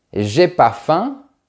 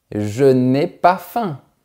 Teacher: au quotidien, quand on parle, généralement, le mot « ne » est rarement prononcé